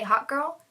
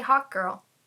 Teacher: Those glottal stop consonants, it sounds like I'm saying Hot Girl.